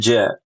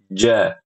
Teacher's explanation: Ja keluar dari lidah bagian tengah yang menempel di langit-langit bagian atas ya. Dan makhrajnya tertutup sempurna.